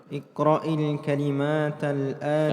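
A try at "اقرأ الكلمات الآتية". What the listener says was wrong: Kalimati kasrah.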